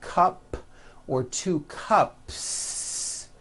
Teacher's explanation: There's no voicing at the end of that word. The S remains unvoiced.